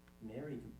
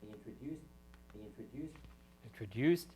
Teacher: you hear that rise in there that's the characteristic sound of a low plus High star